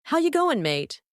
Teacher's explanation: tendency to raise the tone at the end of sentences even when it's not a question